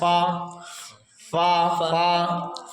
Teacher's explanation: اوپر کے دانتوں کا کنارہ نیچے کے ہونٹ سے مل کر فا ادا ہوتا ہے